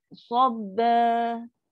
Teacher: Kalau kita berhenti, mad iwad, 2 harakat. Sabba. Lembut je bunyi.